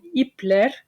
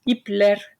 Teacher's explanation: the suffix vowel is not a but e which is a front vowel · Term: vowel harmony